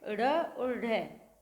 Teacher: जीभ ऊपर उठती है, बहुत जल्दी से वापस नीचे आ जाती है। जब ड़ और ढ का उच्चारण करते हैं तब इसी प्रकार जीभ की गतिविधि होती है, तो इन्हें उत्क्षिप्त व्यंजन कहते हैं।